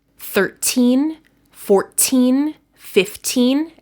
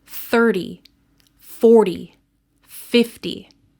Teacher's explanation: In numbers that end with teen, the last syllable is stressed, so the T has a strong pronunciation.